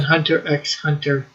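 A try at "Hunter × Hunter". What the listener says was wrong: You don't pronounce the X.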